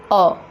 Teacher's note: जिह्वा का मध्य भाग सक्रिय, अर्थात मध्य स्वर के उच्चारण में हमारे जिह्वा का मध्य भाग सक्रिय होता है और यह केवल अ के उच्चारण में ही हमें मिलता है। जब हम अ करते हैं, अ पढ़ते हैं या फिर अ का उच्चारण करते हैं तो हमारी जो जिह्वा है वह बीचों बीच स्थित हो जाती है, इसीलिए इसे मध्य स्वर कहा जाता है।